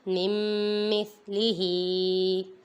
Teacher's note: ادھر بھی دیکھیں نون ساکن کے بعد حرف یرملون میں سے میم آ رہا ہے، ادھر ادغام ہو رہا ہے، ادھر گنہ کریں گے۔